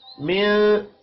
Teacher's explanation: نون ساکن کے بعد سا ہے اخفاء حقیقی ہوگا